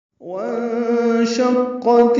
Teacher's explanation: نون ساکن کے بعد شین آنے کی وجہ سے اخفا ہو رہا ہے۔ یہ جو بیچ میں الف لکھا ہوا ہے وہاں شقت نہیں پڑھنا ہے، واو کو نون سے ڈائریکٹ ملانا ہے، یہ اصل میں حمزہ عارضی ہے۔ · یہاں پہ الف لام نہیں پڑھنا، ادغام شمسی ہے